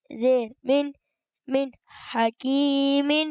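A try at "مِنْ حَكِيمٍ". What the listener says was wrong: اچھا رکنا نہیں من، ہاں کہ ایسے سکتا نہ ہو جائے. من حکیم آپ نے فوراً پڑھنا ہے. من حکیم.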